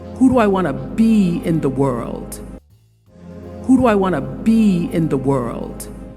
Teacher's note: did you hear how the intonation rises and then Falls the intonation Rises on the word that's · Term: WH questions